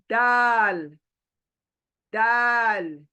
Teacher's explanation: आपका जो जबान है दांतों की जड़ को लगने से यह दाल आदा होगा यानी त और दाल की सेम · जहां से 2 डॉट का त बोले थे, उसी मखरज से दाल। आपका जो जबान है, दांतों की जड़ को लगने से ये दाल अदा होगा